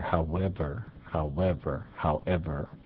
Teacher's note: I think it is mostly spoken with a W glide in there.